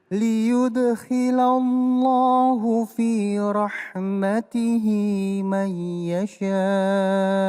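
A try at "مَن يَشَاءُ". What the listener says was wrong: Ya, dan jangan lupa ada nun ketemu dengan ya. Mai. Ya, berdengung. Mai yasha.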